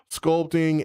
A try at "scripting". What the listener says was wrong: You said sculpting. you said scripting.